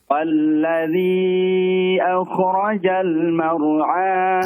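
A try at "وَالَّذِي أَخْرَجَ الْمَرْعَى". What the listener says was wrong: Akhraja. Huruf kha yang sukun jangan akhraja seperti fathah. Akhraja. Akhraja.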